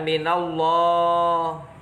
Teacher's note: disitu ada lam jalalah tafkhim ada fathah bertemu lafadz Allah dibaca tebal